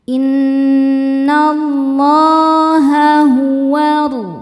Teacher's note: Innallaha hukumnya adalah mad thobi'i muqaddar. Karena ada huruf lam dengan harakat fathah panjang. Cara bacanya panjang dua harakat.